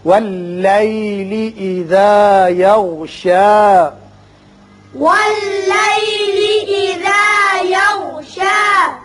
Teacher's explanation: غین کو ذرا پر کر کے پڑھیں گے